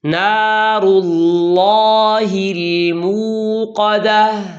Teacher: اس میں اللہ کے لام میں تفخیم ہے، اسے موٹا ادا کرنا ہے۔